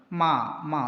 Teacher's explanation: 2 ചുണ്ടിൻ്റെയും അറ്റങ്ങൾ നന്നായിട്ട് സ്പർശിച്ചു കൊണ്ടാണ് മാ എന്ന് പറയുക. അപ്പോൾ 2 ചുണ്ടിൻ്റെയും തെല്ല് മുഴുവനും തൊട്ടുകൊണ്ട് ഉച്ചരിക്കുന്ന അക്ഷരമാണ് മീം എന്ന് പറയുന്നത്.